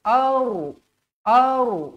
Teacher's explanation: huruf ro mati ni dibaca tebal